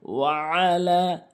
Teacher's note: লাম কিন্তু অবশ্যই তিন আলিফ টেনে পড়বেন